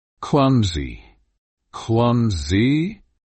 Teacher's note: Emphasize the first syllable clum and make sure the sound is soft.